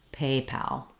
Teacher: in paypal we have a little length and a clear vowel on pal however you don't want paypal not secondary stress but first stress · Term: first syllable stress